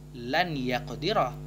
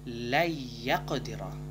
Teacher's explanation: Maka cara bacanya jika digabungkan antara kata lan dan yaqdira, bukan dibaca lan yaqdira, namun la yaqdira. Nun tidak dibaca, namun dimasukkan ke huruf ya atau langsung ke huruf ya dengan dengung. Idgham bi gunnah, dengan dengung.